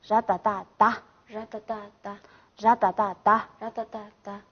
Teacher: 他如果加上这个上加字的话，好，变为这个不送气